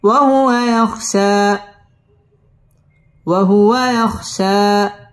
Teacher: ওয়াও ঠোঁটগোল করিয়া পড়তে হবে